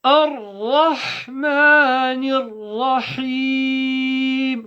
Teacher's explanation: Full mouth ra, ha from the throat.